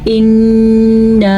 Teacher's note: اِنَّا مد بھی ادا کرنی ہے اور نون کا غنہ بھی ادا کرنا ہے